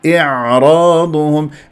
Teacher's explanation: الهمزه مع العين شوي فيها صعوبه لانه الهمزه اقصى الحلق والعين وسط الحلق فلازم الانتقال يكون سلس من اقصاء الى الوسط والعين الساكنه في